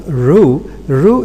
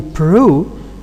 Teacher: R, we know, is a voice sound, but when it is preceded by P, here it becomes devoiced.